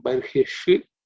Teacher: In terms of pronunciation, tam yajnam barhishi, the shi is cerebral sha